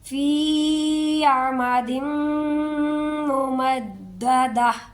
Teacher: دیکھیں یہ ہر آیت ہی اس طرح سے ختم ہوتی ہے کہ یہاں پر تو ہا آ گئی ہے ایک دو جگہ، لیکن ہر جگہ تا گول تا ہے، یہ گول تا جہاں پر بھی آ جائے وہاں جب بھی ہم نے وقف کرنا ہے تو اس گول تا کو ہم نے ہا ہی پڑھنا ہے، ٹھیک ہے، تا کی آواز نہیں آئے گی بلکہ ہا کی آواز آئے گی